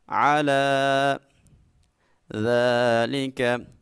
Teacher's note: ذال میں سٹی پیدا نہیں کرنی، جب بھی ذال کو ادا کرنا ہے اپنی زبان کے نوک، جو سامنے بڑے 2 دانت اوپر والے ان کی نوک کے ساتھ لگائیں گے۔